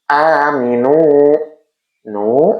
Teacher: Domah diikuti wau sukun adalah hukum mad thobi'i. Dipanjangkan satu ayunan atau dua harakat.